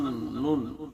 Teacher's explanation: জিহ্বার আগা তার বরাবর উপরে তালুর সঙ্গে লাগিয়ে নুন উচ্চারিত করব